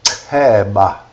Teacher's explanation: Variations are ch or ch, articulated with more air passing out of the mouth, making it an aspirated sound